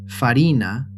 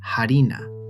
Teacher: Latin's F at the start of a word often became a silent H in Spanish — farina became harina — while French and Italian kept their F: farine, farina.